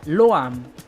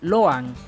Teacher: Yo lo que hago para no confundirlas es que la pronunciación de la M la hago un poco más muteada o un poco más apagada a comparación de la N. A cambio, con la N no trato de cerrar los labios al final, sino que hago lo contrario, los mantengo separados